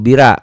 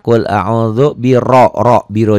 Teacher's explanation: tapi r-nya dibaca tebal Kenapa karena rnya baris di atas ya tafkhim